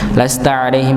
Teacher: mim sukun ketemu ba maka di disamarkan di sini ditahan terlebih dahulu. Jangan terburu-buru.